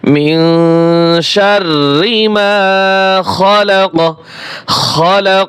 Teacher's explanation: আয়াতের শেষে জজম ব্যবহারের কারণে কলকলার হরফ হলে কলকলা করে পড়তে হয়।